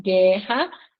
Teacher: vejam que nós não escutamos o som do U né Então aí a gente tem guu que é um dígrafo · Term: dígrafo consonantal